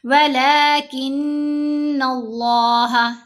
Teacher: نون پر غنہ بھی کریں گے، لفظ اللہ میں لام کو موٹا پڑھیں گے اور 2 حرکات کی مقدار لمبا کیا